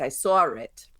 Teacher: in a word like drawing, sometimes there'll be an r inserted